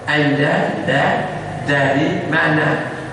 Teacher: Huruf dal yang benar, ujung lidah kita ke pangkal gigi.